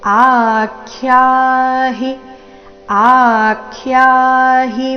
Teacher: ಆ ದೀರ್ಘ ಹೇಳಿ ಅದರ ಮೇಲೆ ಆಘಾತ ಬರಬೇಕು